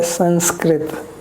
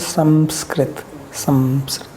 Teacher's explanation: Anuswara should be pronounced with closed lips. So like we say Sanskrit, but it is proper pronunciation is Samskrit.